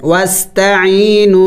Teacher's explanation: اور واو مدہ کو بھی ایک الف کے مقدار لمبا کرنا ہے